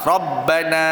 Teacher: ra tebal, ba buka, na buka.